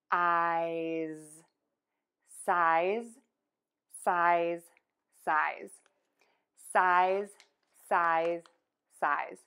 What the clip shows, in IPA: saɪz